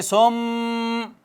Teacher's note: غنہ، جو کہ خیشوم سے ہوتا ہے، اور اس کو کتنا کھینچتے ہیں؟ قصر کرتے ہیں اس پر 1 سے 2 الف